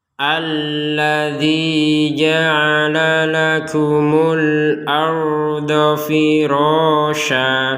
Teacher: Tulisannya itu firasyan. Tapi barusan kita bacanya firasya. Nah, ini namanya mad iwad. Jadi mad iwad ini adalah tanwin fathatain ini yang karena kita wakaf sehingga ini dibaca dengan menjadi firasya, menjadi yang di sini harokatnya ada dua, ini tanwin, maka menjadi firasya.